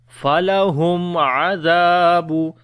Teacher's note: After the mim again there is ain, so this is izhar shafawi, the clear sound of mim.